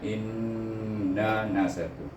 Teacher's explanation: Kenapa in tu berdengung? Kerana kita wajib membaca kerana nun bertasydid. Iaitu hamzah ni bertemu dengan nun bertasydid, dia kena baca dengan wajib bergunah.